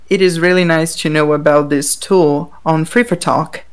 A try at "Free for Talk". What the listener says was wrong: Now say Free for Talk. Maybe you said a P. Free for talk.